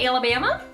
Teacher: She's doing a good job on that rising intonation a lot of Kiwis speak in.